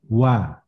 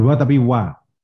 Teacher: wa itu huruf safatain, huruf bibir. Jadi makhrajnya di lisan, di bibir kita ini, di safatain ini, dua bibir ini. Jadi caranya itu mengucapkan gini, dimoncongkan dulu wa, nah itu wa, itu bukan wa tapi wa.